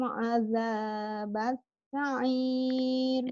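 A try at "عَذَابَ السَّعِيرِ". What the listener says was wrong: Sinnya coba. Azabas. Sinnya mengalir nafasnya.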